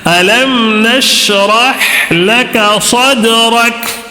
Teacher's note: اس میں یہاں پہ خلقلہ کا ایک قاعدہ ہے، ٹھیک ہے، دال کے اوپر سکون ہے تو قلقلہ ہوگا، آواز کو ٹکرانا ہے